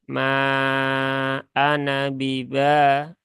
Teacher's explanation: Maka ini alifnya ya tidak dibaca, ya. Sehingga dia dibaca pendek.